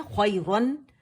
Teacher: नून सुकून के बाद हमें या पे या मुतहर्रिक मिली, या पे फतह था, तो जो नून था वो या के अंदर चला गया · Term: इदगाम नाकिस